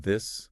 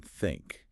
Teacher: The voiced eth, as in this, involves vibrating your vocal cords, while the unvoiced tiet, as in think, doesn't. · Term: th sound